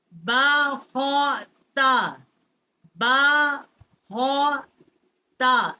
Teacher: با جو ہے اس کا مخرج ہونٹوں کی تری سے ہے